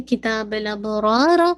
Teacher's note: اب با پہ قلقلہ ہے، را کو ہیوی رکھیے گا